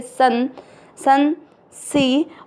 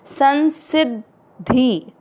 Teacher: योग में अ मिक्स करेंगे योग। स के ऊपर जो बिंदी है शब्द के पहले अक्षर पर है तो उसको नाक से आधा न पढ़ेंगे